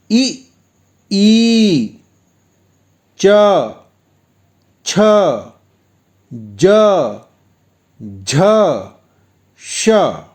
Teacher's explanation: अब आते हैं तालव्य वर्ण पर, जिसका उच्चारण स्थान तालु है।